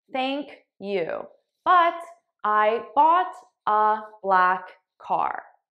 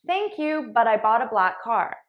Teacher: I paused between every word and I didn't link my sounds